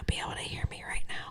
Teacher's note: that's a soft breathy voice which takes a lot of energy to replicate